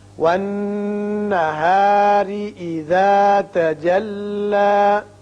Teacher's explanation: را کے نیچے زیر ہے، اس کو باریک پڑھیں گے.